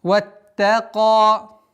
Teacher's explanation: Удваиваем, мягко произносим та, а потом на твердый звук каф уходим. Аннулируется удлинительная буква, остается удлинительный звук в размере 2 огласовок.